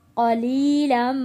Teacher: मीम के ऊपर तशदीद है, यहाँ पे गुन्ना अदा करेंगे।